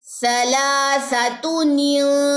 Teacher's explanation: اب نون ساکن کے بعد آگے تا آ رہا ہے تو یہاں پہ اخفا ہوگا، اخفا حقیقی ہوگا